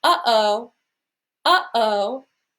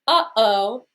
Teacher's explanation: in between those two syllables we feel that little impulse from the throat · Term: glottal stop